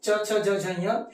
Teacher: च छ ज झ य, श और य, इनका उच्चारण स्थान क्या हुआ, तालु हो गया